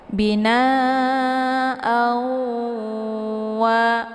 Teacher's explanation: ditekan a-nya, ya, kemudian ditahan suaranya hingga 2 harakat, dileburkan suara ke wa, ya. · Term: idgham bi gunnah